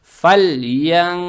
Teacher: Смотрим на следующую букву, это буква в, это ихфа. То есть в данном случае букву нун надо произносить скрыто, удерживая через нос, то есть вот так.